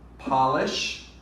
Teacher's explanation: polish stressed on the first syllable